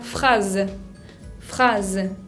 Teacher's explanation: También la palabra phrase, phrase, que significa frase, con una S que se pronuncia Z